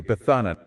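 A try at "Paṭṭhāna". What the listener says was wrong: No, it's not pathana. It's P-A-T-T-A-N-A. And the last A is a long A, so it would be a double A. P-A-T-A-N-N-A. Patana.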